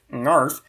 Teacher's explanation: a syllable that starts with a velar nasal